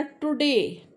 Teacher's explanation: अब देखो इसमें बिल्कुल टी, आपकी जीभ को देखो, तीनों केसेस में आपने बोला टुडे, तो जब शुरू में टी आएगा तो टी, टंग आपकी बिल्कुल पीछे चली जाएगी